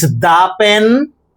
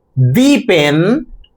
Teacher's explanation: The second one, the pen, with stress on the article or the definite article the.